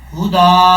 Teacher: دال کے اوپر جو کھڑا زبر ہے اس کو پڑھا جائے گا. ایک الف کی مقدار، اس کو لمبا کیا جائے گا